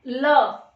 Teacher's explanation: अब जब ल बोलते हैं तो हमारी जीवा है ये दंत के थोड़े से पीछे हिस्से पे लगती है और साइड से हवा निकलती है। ठीक है, ल बोल के देखो कहाँ से हवा निकल रही है, साइड से, तो इसको कहते हैं पार्श्विक